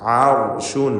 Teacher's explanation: റാഇന് തഫ്ഖീം കൊടുക്കണം, കാരണം അതിന് സുക്കൂൻ മുമ്പിൽ ഫത്ഹുമാണ്. ആർഷുൻ എന്ന് റായി തടിപ്പിച്ചുച്ചരിക്കുക.